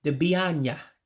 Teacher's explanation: the two words have two A's that run together so you gotta eliminate one of them